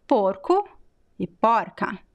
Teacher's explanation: at the end of a word is a very weak oo sound